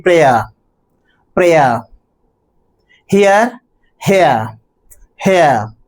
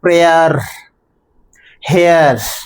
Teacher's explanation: But if we pronounce these two words in American English or according to American rules of pronunciation the final R is to be pronounced clearly